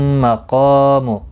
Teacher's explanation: قاف مستعلیہ ہے، پر پڑھا جائے گا. الف مدہ بھی ہے، ایک الف کی مقدار کے برابر کھینچ کر بھی پڑھا جائے گا.